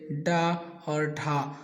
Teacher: जिन व्यंजनों के उच्चारण में जीभ की उल्टी नोक ताल को छू करके झटके से हट जाती है, उन्हें उच्छिष्ट व्यंजन कहते हैं।